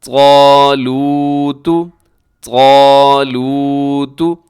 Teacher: اس میں حرف طا اسے موٹا رکھیے گا